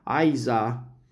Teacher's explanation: a shortening of the long vowel happens